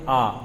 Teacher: विव्रत का मतलब होता है जिसमें पूरा मुख आपका ओपन हो यानी खुला हो बोलने में, तो वो आता है आ, बड़ा आ आप बोलोगे तो पूरा मुंह खुला हुआ होगा। विव्रत का मतलब पूरा मुख खुला होना।